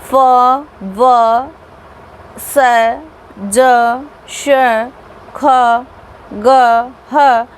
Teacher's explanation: दो उच्चारण अवयव एक दूसरे के इतने निकट चले जाते हैं कि दोनों के बीच से निकलने वाली हवा संघर्ष या घर्षण करती हुई बाहर निकलती है